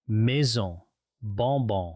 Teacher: The on sound is quite similar, but it's a little more closed. You bring your lips together slightly.